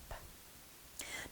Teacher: And the P in language is what we call an occlusive, because the two lips come together blocking all of the air, so that everything it's occluded, it's a closed consonant. And it's voiceless, meaning that the vocal cords are not operating at all, it's just P.